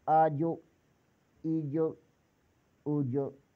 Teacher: حروف کلکلہ ہے، کلکلہ خوب ظاہر ہوگا